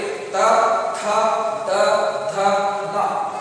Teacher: ಹಾಗೆಯೇ ತವರ್ಗ ತಾಲು ಏನಿದೆ ಅದೇ ರೀತಿ ಇದು ದಂತ ಅಂತ ಹೇಳ್ತೀವಿ. ಈ ತವರ್ಗ ಅಕ್ಷರಗಳು ಉಚ್ಚಾರಣೆ ಆಗಬೇಕಾದ್ರೆ ಮೇಲ್ಭಾಗದ ದಂತ ಏನಿದೆ, ದಂತಕ್ಕೆ ನಾಲಿಗೆ ಸ್ಪರ್ಶವಾಗುತ್ತೆ. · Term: ದಂತ್ಯ ಅಕ್ಷರಗಳು